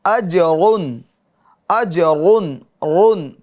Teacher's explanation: را پر دو پیش ہو تو را کو کیا کریں گے؟ پر یعنی موٹا پڑھیں گے